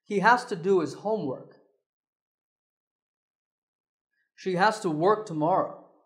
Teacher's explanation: we use has to which is reduced to hasta